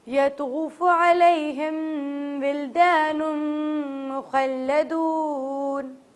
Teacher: ولدان نون سے میم ملاتے ہوئے میم مشدد ہے تو اس وجہ سے ہمیں میم کے اوپر غنہ کرنا ہوگا